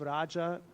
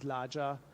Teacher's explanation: what's very distinctive for the eastern part is the change of Old Indo-Aryan, which means Sanskrit R, R, to L. So instead of Raja, we find Laja.